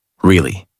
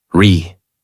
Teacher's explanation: Voice rises and falls. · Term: Natural American tone